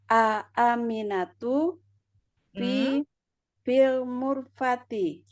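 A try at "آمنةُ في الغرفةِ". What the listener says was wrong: Bukan mu. Bukan mim. Mim. Aminatu fil ghurfati.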